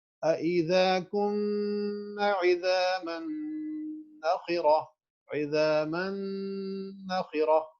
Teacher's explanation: جب میم ادا کر رہے ہیں تو رائٹ اوے آپ کے ہونٹ جو ہیں they are touching each other, اور اسی وقت نوز میں سے آواز نکل رہی ہے